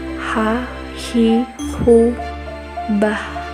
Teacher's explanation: Huruf ini dikeluarkan dari tengah tenggorokan ketika dilafalkan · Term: huruf H